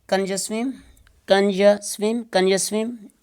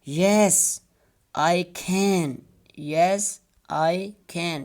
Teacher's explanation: we have to use weak form, a form in which there is a shava.